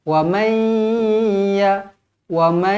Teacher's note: limanahalum Akir w w Oke pastikan ada bunyi sengausengau tu Oke dengung mesti ada bunyi macam sengausengau tu